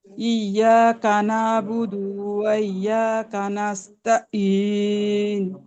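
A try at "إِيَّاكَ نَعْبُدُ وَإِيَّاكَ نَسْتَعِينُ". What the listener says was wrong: ইন হয়ে যাচ্ছে, আপনার হামজা উচ্চারণ হয়ে যাচ্ছে। ইয়াকা না'বুদু ওয়া ইয়াকা নাস্তাঈন।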